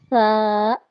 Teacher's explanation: زبان کی نوک سامنے کے 2 دانتوں کے کنارے یا سرے سے لگے تو سا ادا ہوتا ہے